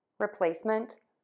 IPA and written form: rɪˈpleɪsmənt (REPLACEMENT)